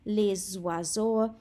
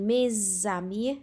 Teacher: mae'r S yn dilyn gan llyfariad, felly ni'n dweud y S fel Z sound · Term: S liaison